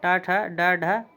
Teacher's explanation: मूर्धन्य जिनका उच्चारण मूर्धा से होता है